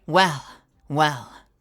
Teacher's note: that I I guess you could call that Airy well well vocalization drops off you just get a little at the end